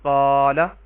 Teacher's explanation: الف سے پہلے قاف کے اوپر زبر ہے تو اس الف کو الف مدہ کہیں گے اور ایک الف کے برابر لمبا کریں گے